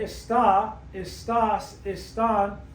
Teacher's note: So when we say está, estás, están, we're stressing the last vowel. That violates the rule.